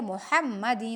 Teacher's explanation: یہاں بھی عین کو وسط حلق سے پڑھیں گے، علی محمد، حا کو باریک پڑھیں گے، وسط حلق سے پڑھیں گے ، محمد، وعلی، واو کو موٹا پڑھیں گے ہونٹوں کو گول